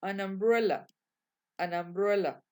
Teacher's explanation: la n haciendo la liaison con la u, que en este caso se pronuncia a